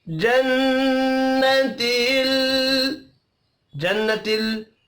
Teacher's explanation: नून मुशद्दद पर गुन्ना करेंगे, लाम साकिन पर कलकला नहीं करना